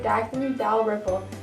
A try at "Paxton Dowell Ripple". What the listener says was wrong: Paxton! Paxton! It's not Daxton, it's a P for Paxton!